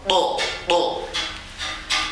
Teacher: to ini tidak seperti TO Indonesia, jangan to, tapi harus betul-betul itbaq ya. Dan ini huruf terkuat to ini.